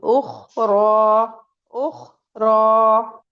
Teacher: जब हम ख बोलेंगे तो भी एयर हमारी बाहर निकलेगी उख र उख र गैप रहता है हमारी जो टंग है वो यहां से निकल उठी हुई है और इसमें में यहां पे ये गैप है।